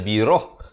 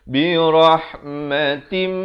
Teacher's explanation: Kemudian ba baris kasrah bertemu ra baris atas, bertemu ha yang bertanda mati. Ha ni di pertengahan kerongkong mesti ada bunyi pedas itu